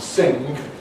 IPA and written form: ˈsɪŋg (sing)